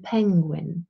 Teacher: we can stop the airflow at the point of the lips for instance when we say as an penguin then we stop